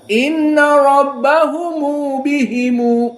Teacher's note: Kita katakan harokatan kamitsli mat tabi'i. Jadi tidak panjang atau mutawassit. Panjang seperti misalnya Wars atau Hamzah al-Isba, dan tidak tawassut seperti Jumhur, Hafiz an Asim dan yang lainnya.